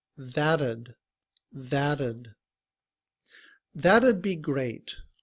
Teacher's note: When we combine ud with that, the T in that sounds like a D, and we say that'd, that'd.